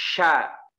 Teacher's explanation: secara garis besar adalah menyebarnya angin dalam mulut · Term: sifat tafasyi